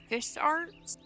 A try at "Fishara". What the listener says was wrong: That's an A, not a T.